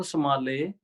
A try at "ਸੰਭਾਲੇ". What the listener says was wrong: ਇਹਨੂੰ ਮੰਮੇ ਅੱਖਰ ਨੂੰ ਭਾਰਾ ਕਰਕੇ ਉਚਾਰਨ ਕਰਾਂਗੇ, ਸੰਭਾਲੇ।